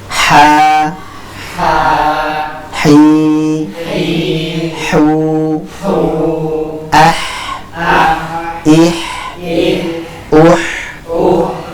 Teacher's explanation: Jadi suaranya tipis, jernih, dan sekali lagi mengalir karena dia memiliki sifat rohwah, yaitu aliran suaranya mengalir dan aliran nafasnya dia pun mengalir. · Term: huruf ha